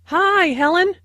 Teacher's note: Notice that the <i> sound in <hi> is extended